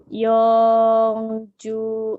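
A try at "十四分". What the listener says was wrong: Ju dulu. Ju Yongpung.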